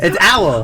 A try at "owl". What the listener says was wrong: Why are you adding 2 syllables on it? You're just going owl. Yeah, go away. That's 2 syllables.